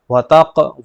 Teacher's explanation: قاف پر جزم ہے تو قاف حرف قلقلہ میں سے تو قلقلہ ہوگا